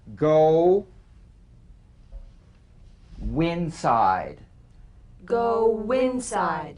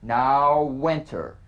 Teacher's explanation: Linking words that end in the stretch vowel oo, number 1. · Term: the linking W